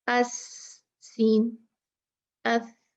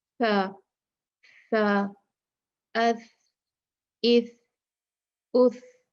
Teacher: سین کی جو آواز ہے وہ بہت تیز ہے نا ہوا کی